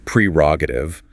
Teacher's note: The correct pronunciation is prerogative with the emphasis on the first syllable.